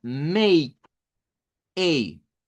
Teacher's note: si tomamos la E del español y tomamos la I corta que aparece en el inglés y las juntamos, entonces formamos el sonido A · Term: diptongo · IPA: /eɪ/